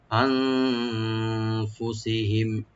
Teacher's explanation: আনফুসিহিম হামজার পরে যে নুন সাকিন এখানে আমরা ইখফা করবো, এখানে লাইট গুণা হবে